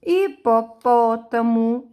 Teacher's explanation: hipopótamo é acentuado no pó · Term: proparoxítona